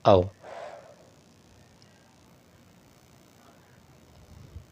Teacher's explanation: कंठोष्ठ, कंठ और ओष्ठ दीर्घ स्वर वर्ण का उदाहरण होता है औ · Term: कंठोष्ठ दीर्घ स्वर